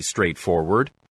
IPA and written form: streɪtˈfɔːwəd (straightforward)